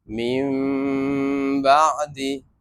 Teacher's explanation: হরফ একটি বা যদি নুন সাকিন অথবা তানবিনের পরে বা আসে তখন মিম দ্বারা নুন সাকিন অথবা তানবিনকে মিম দ্বারা পরিবর্তন করে পড়তে হবে। মিম দ্বারা পরিবর্তন করে গুনাহ করে পড়তে হবে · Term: কলাব